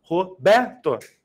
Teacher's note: né Ela é uma palavra é paroxítona lembra disso porque porque a sílaba tônica recai se na penúltima sílaba